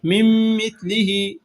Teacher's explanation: یہاں نون ساکن کے بعد میم آ رہا ہے تو غنہ کے ساتھ ادغام کیا جائے گا